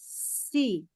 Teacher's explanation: kalau baca Sin itu sebenarnya kayak giginya tuh rapat nah lidahnya ke bawah si ada desisnya